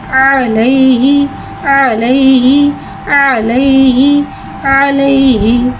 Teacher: या साकिन है, या साकिन से पहले ज़बर आ रहा है, यालीन हो रहा है, लिहाजा यालीन को बगैर खींचे बगैर झटका दिए नरमी से मारूफ पढ़ेंगे। हा को एक अलिफ यानी 2 हरकत के बराबर खींच के पढ़ेंगे।